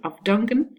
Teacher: Afdanken, you don't say afdanken, but you voice the f because of the d, which is voiced